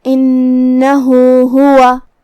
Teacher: کلمت انہ نون کے تشدید کا دھیان رہے، آخری میں یہاں ہاں پہ الٹا پیش ہے، مطلب یہاں مد صلہ صغرا ہے، ہم اپنی آواز دو مد کے برابر لمبی کریں گے